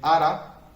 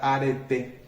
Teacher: En ara, la A final, que no se acentúa, también desapareció.